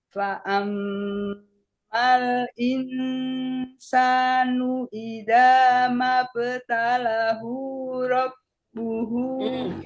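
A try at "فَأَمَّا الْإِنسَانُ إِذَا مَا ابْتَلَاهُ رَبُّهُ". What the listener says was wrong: Yang panjang lanya Bu. Mabtalahu.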